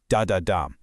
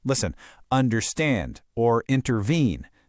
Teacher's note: Okay, now we're getting into the three-syllable feet. The anapest is two unstressed syllables followed by a nice, strong stress. Da da dum. It has this kind of galloping, rolling feel to it.